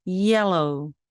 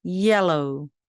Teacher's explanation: 그리고 리을 발음이죠. 치경에 닿으면서 밀듯이 르 하는 L 발음이 두 개나 나왔습니다. 그리고 OW는요, 함께 만나서 오 소리가 납니다.